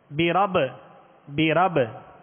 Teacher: قلقلہ ہوگا یہاں پہ. برب، برب با ساکن ہے، با حروف قلقلہ میں سے، لہذا یہاں پر قلقلہ کریں گے